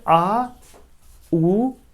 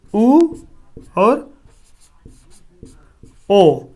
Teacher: ये सब ऐसे स्वर हैं जिन्हें हमें बोलने के लिए हमारे जीभ के पछले वाले भाग का इस्तेमाल किया जाता है। बस सीधी सी बात जानिए, इसे हम क्या कहेंगे, पश्च स्वर के नाम से जानते हैं।